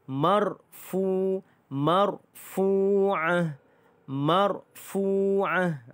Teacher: ra itu dibaca dengan tebal kerana dimatikan ra itu dan berbaris di atas